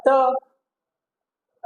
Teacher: वर्ग समझ गया, वर्ग के मतलब चारों ही वर्ण आते हैं, ठीक है। बाद में त, ता बोलते हैं, ठीक है, तो ये है दंत्य वर्ण